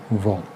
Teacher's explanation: दंतोष्ठ वाला सिर्फ एक ही वर्ण है वो है व जो दंत और ओष्ठ की सहायता से बोला जाता है